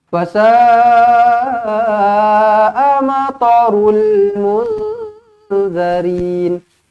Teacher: Nun kosong bertemu dengan zal, ikhfa hakiki, dengungkan 2 harakat.